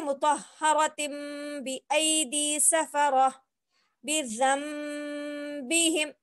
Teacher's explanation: देखिए अब ये कायदा हमको मालूम हो गया कि तनवीन के बाद जो अगर बा आए तो अक्सर हमारी गलती हो जाती, जैसे मुतहहरतिन हम इसको बोलते थे, लेकिन अब मालूम हो गया कि जो है यहाँ पे तनवीन की आवाज नहीं आनी है, तिन की जगह हम तिम बोलेंगे